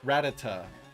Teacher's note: Some people put the emphasis on the last syllable.